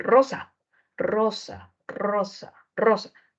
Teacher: el aire sale en medio de una vibración por eso se le va a llamar vibrante · cada vez que vibra su lengua, el aire sale.